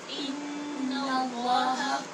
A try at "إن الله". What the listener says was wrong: نون کو پر نہیں کرنا، لام کو پر کرنا ہے. ان اللہ، نوّا نہیں پڑھے، نون باریک پڑھے. ان ان ناللہ، نل ناللہ، ان اللہ